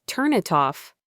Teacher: It becomes turn it off. Can you feel how your tongue just taps the N and then moves right into the eye?